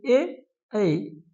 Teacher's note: ए ऐ इनका उच्चारण क्या है? कंठ तालव्य। कंठ और तालु के उच्चारण से